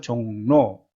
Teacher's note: 종의 받침이 비음이죠. 그래서 로가 노로 바뀝니다.